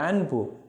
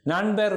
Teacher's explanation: அன்பு இன்னனாவை அடுத்து வருகின்ற போது பி ஆக ஒலிக்கிறது